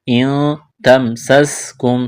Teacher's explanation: نون ساکن کے بعد تا ہے، یہاں پر اخفا کریں گے، آواز ناک میں چھپائیں گے